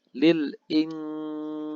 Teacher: Ada nun sukun bertemu dengan huruf sin. Hukum bacaannya adalah ikhfa, dibaca secara samar-samar atau mendengung.